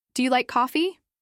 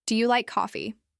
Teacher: Your voice should rise gently at the end, especially on the word coffee. Not too dramatic, just a light lift. · Not too dramatic, just a light lift. Now try saying it again, but with a falling tone.